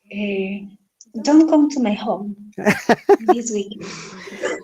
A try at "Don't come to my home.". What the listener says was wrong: Don't come to my home. The voice and your tone should be higher. Remember, imperative sentence, our tone is always higher.